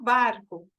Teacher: eu tenho que o barco é uma sonora porque ele vibra mais · elas são oclusivas ou momentâneas isso quer dizer que eu fecho a boca ou eu fecho a boca momentaneamente para emitir esse som depois quando eu vejo intervenção das cordas vocais eu tenho que · é uma sonora porque ele vibra mais a forma de articulação o ponto de articulação é o mesmo os lábios se fecham